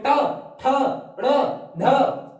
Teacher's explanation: फिर मूर्धन्य मतलब कि अग्र, आगे वाला पार्ट, मतलब कि हमारे तालव का आगे वाले पार्ट पे हमारी जीभ टच हो रही है, उसे बोलेंगे मूर्धन्य।